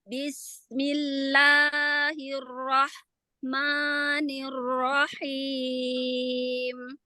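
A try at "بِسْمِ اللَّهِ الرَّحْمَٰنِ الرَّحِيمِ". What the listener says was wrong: Masih sedikit banget ya. Coba yang disukunkan yuk huruf H-nya. Alirkan lagi. Alirkan. Nafasnya mana? Alirkan. Alirkan ya. Jadi nggak ngerem ya. Nah, tempo durasinya. Tempo durasi atau tempo atau durasi rohwahnya. Aliran suaranya ya. Aliran nafasnya.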